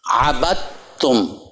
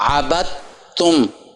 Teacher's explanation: دال کی آواز ختم ہو گئی، با کو تا سے ملانا